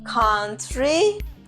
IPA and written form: ˈkʌn.tri (country)